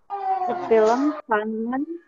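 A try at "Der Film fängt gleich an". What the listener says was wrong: Ada umlaut di atasnya A, der film. Ya, feng. Jadi anfangen itu bacanya der film gleich, der film feng gleich an.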